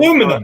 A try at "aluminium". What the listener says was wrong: There's another I in there.